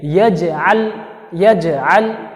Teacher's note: یہاں پر جیم ہے جو حروف قلقلہ میں سے جیم ہے، تو اسے قلقلہ کریں گے، جھٹکا دیں گے. یہاں پر لام ہے، لام کے اوپر بھی جزم ہے، مگر یہ لام حروف قلقلہ میں سے نہیں ہے، اس وجہ سے اسے جھٹکا نہیں دیں گے